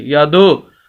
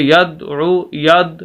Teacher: اب اصول یہ ہے کہ جب یہ 5 حروف جو حروف قلقلہ ہیں، یہ 5 حروف جب ساکن ہوں، جیسے یہاں پر دال ساکن ہے، یہ ساکن کی علامت، جب یہ 5 حروف ساکن ہوں تو ان کی آواز کو ہلا کر پڑھنا قلقلہ کہلاتا ہے. اب یہ دال ہے یہاں پر ساکن، تو اس وجہ سے دال کی آواز کو ہلائیں گے. یادو، اگر ہم قلقلہ نہ کریں تو پھر ہم پڑھیں گے ید عو، ید، یا زبر دال ید، بس یہ روک دیں گے، جو کہ درست نہیں ہے.